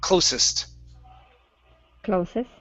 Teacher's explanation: You said closest. So unvoiced S.